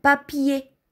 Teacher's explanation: изговаряме отворено е в края на думата папие или ание чава кошничка а пание изговаряме отворено е пание